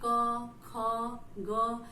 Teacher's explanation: जब हम क बोल रहे हैं तो उसके साथ अ का उच्चारण हो रहा है, यानी कि उसमें स्वर मिला है। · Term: व्यंजन